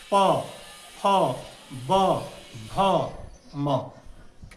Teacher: प फ ब भ म दोनों ओष्ठ सट कर हवा को अवरोधित ये करता है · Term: प वर्ग